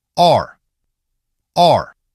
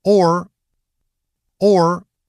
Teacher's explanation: /ɑr/ starts wider, /ɔr/ starts rounder.